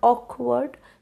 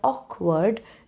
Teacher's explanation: I stressed on the part awk, and I said the word word with less force, because it's a disyllabic word. The tendency is to put stress on the first part, that is awk, and then I do not give stress on the next part because that will not sound good.